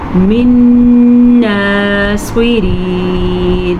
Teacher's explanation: صاد کو پر پڑھیں گے، را کو باریک پڑھیں گے، را کے نیچے زیر کی وجہ سے